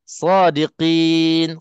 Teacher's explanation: Kadang-kadang kin jadi huruf kaf. Kalau tak tebalkan qaf tu dia jadi huruf kaf. Sebab makhraj qaf dengan kaf memang berjiran, sangat-sangat rapat. Bersebelah-sebelah je.